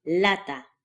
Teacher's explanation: pronounced with only the front of your tongue